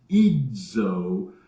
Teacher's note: when you don't just say Z but you say Ido it's DZ and you can feel your tongue go up there and hit · don't just say Z but you say Ido it's DZ and you can feel your tongue go up there and hit that place just behind your teeth just behind your upper teeth